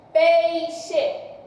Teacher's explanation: Se não tem tremida no nariz, então aqui é um ditongo oral